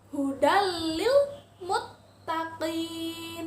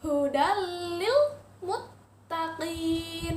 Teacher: tanwinnya lebur ditasydidkan ke huruf lam